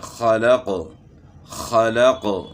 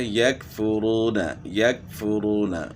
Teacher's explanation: تو وہ فرق ہم نے معلوم کرنا ہے کہ قاف کی آواز موٹی اور جھٹکے والی ہوتی ہے، جیسے خلق خلق، تو قاف کو ہم نے موٹا پڑھنا ہے، اور کاف کی آواز باریک اور بغیر جھٹکے والی، جیسے یکفرون یکفرون، تو آسانی سے ہم نے کاف کو پڑھا۔ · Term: قاف اور کاف میں فرق